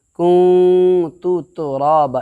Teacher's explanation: نون ساکن کی آواز کو ناک کے بانسا میں ایک الف کے برابر چھپا کر کے ادا کریں گے